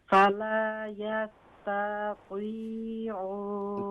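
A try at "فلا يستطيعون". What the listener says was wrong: ता को मत खींचे। फला यस्ततीऊन।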